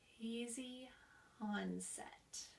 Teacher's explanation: we're letting a little bit of air out of our throat and then we have a very gentle voicing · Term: easy onset